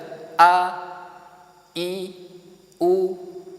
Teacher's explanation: Yang pertama adalah hamzah. Ketika kita mengucapkan hamzah a, i, u, nah, maka dia dari tenggorokan paling dalam. Yang kalau hamzah ini dia punya sifat jahar.